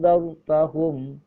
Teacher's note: cara membacanya harus dibaca dengung dan disamar